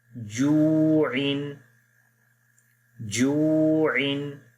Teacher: واو ساکن ہے، اس سے پہلے پیش ہے، واو مدہ ہے، ایک الف کے برابر لمبا کریں گے